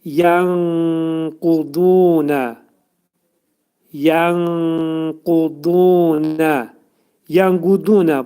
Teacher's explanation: İxva gizli oxu deməkdir. Yəni nun hərfi qaf hərfinə yetişdikdə qaf hərfinin məxrəcində gizlədilir.